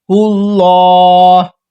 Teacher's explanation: اللہ کی لام کو ہم نے پر موٹا کر کے پڑھا ہے، موٹا کر کے پڑھا ہے کیونکہ اس سے پہلے والے حرف ہا پر دیکھیں آپ پیش ہے، اگر زبر یا پیش ہوگا تو ہم اسے پر موٹا کر کے پڑھیں گے، ورنہ ہم باریک پڑھیں گے لام کو، اللہ کی لام کو۔